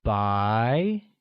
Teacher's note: pronounced with the mid rising tone